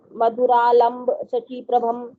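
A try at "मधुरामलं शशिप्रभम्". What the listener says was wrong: यहाँ मधुरामलम में भी व्यक्ति आधा माँ खा जाते हैं, तो उसको दोबारा बोलो।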